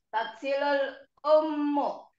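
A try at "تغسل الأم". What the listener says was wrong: Iya, bagus. Sekali lagi.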